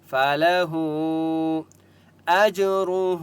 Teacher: ہا کے اوپر چھوٹی مد ہے اس لیے ہا کو 3 سے 4 الف کی مقدار کھینچ کر پڑھیں گے